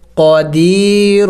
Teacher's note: یا ساکن سے پہلے جب زیر ہو تو اسے یا مدہ کہتے ہیں، اس کو ایک الف کے مقدار لمبا کرنا ہوتا ہے